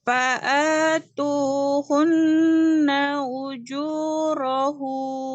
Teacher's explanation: hu-nya tidak panjang. Yang panjang itu apa? Nunnya, dengungnya yang panjang. Ujurahun. Hun langsung hun pendek ya.